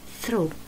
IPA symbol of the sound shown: θ